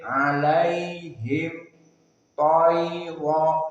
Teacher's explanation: mim as-sakinah bertemu dengan ta idhar asy-syafawi, maka mimnya dibaca dengan jelas idhar. Alaihim ta, maka hukumnya idhar syafawi.